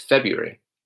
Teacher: The R after the B isn't really heavily pronounced here.